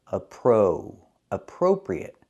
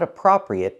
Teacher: we have to use a long o for the second syllable appro appropriate not appropriate but appropriate use the long o like